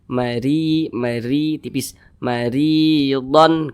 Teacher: huruf ra ini dibaca tipis, dibaca tarkik